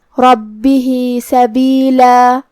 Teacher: با پہ تشدید ہے تو 2 حرف کے برابر ہم حرف البا کو پڑھیں گے جو کہ ہا کے نیچے کھڑی زیر ہے تو یہاں بھی مد صلہ صغریٰ ہے. ہم اپنی آواز 2 مد کے برابر لمبی کریں گے · خا حروف تفخیم میں سے بھی ہے تو ہمیں یہ حرف کو بھاری آواز میں ادا کرنا ہے. کلمت ربہ میں را پہ زبر ہے تو را کا حکم ہے تفخیم